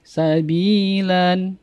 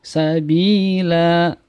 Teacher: Mad iwad adalah adanya fathatain di akhir kalimat dan dia wakaf atau berhenti. Maka cara membacanya satu alif atau 2 harokat tanpa tanwin. Jadi kita wakaf berhenti, kita baca satu alif atau 2 harokat tanpa tanwin.